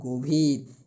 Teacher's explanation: তাহলে গভীরের উচ্চারণ অবশ্যই গভীর বলতে পারবো না, আমাদের উচ্চারণের ক্ষেত্রে বানান কিন্তু এটি, কিন্তু উচ্চারণের ক্ষেত্রে আমাদের বলতে হবে গভীর। এই গর সাথে যে অটা রয়েছে ব্যঞ্জনের সাথে যুক্ত মনে মনে, সেই অটা ও হয়ে যাচ্ছে, অর্থাৎ গভীর।